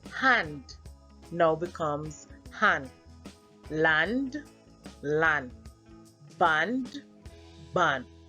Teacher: D is often omitted from the end of words